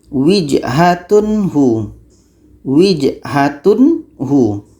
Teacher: Tanwin harus jelas, hu pun harus jelas dan tidak ada dengung di sini.